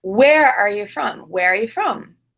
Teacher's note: because I stress the word where and the verb are that the pronoun you is not stressed and it becomes kind of like y. It's not you but y.